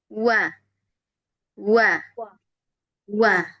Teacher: Makhrajnya huruf wau dengan menghimpun bibir atas dan bawah dan tidak merapatkannya. Jadi dimonyongkan ya.